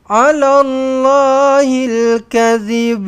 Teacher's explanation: Contohlah kan, kalau nak berhenti dekat sini, maka jangan lupa untuk lantunkanlah. Kena lantunkan ba dekat belakang, dia akan jadi qalqalah kubra.